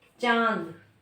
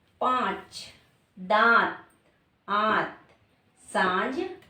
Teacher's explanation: का भी प्रयोग कर रहे बोलने में चांद चंद बिंदु है दोनों का ही प्रयोग हो रहा है यानी नासिका का भी और मुख भाग का भी पांच दात आत सांज आदि यहां पर सब में चंद बिंदु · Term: अनुनासिक